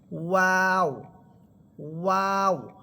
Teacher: প্রথমে দুই ঠোঁট গোল করবেন, এরপর দুই ঠোঁট ছড়িয়ে দিয়ে আবার সংকুচিত করে নিয়ে আসবেন, তখনই আপনি ওয়াও হরফটা সুন্দরভাবে উচ্চারণ করতে পারবেন।